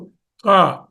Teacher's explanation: క అన్నప్పుడు లోపల ఉంది మడిచి ఉంది నాలిక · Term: క వర్గము